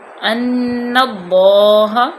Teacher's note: علم تعلم ان اللہ، اب نون مشدد ہے، اس پہ غنہ کیا، ان اللہ، اللہ کی لام کو پر پڑھا، ہاں جو ہے اس کو انتہائی حلق سے اچھے طریقے سے ادا کریں۔